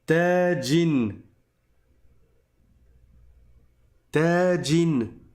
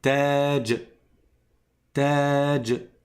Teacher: Oui, normalement quand le mot est tout seul, comme je m'arrête dessus, je mets un soukoun à la fin.